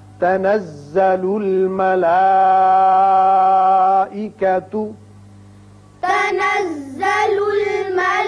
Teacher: مد متصل ہے، 5 حرکات کھینچنا ہے.